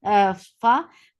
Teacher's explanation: fa will get sifa of rakhawa, and fa is light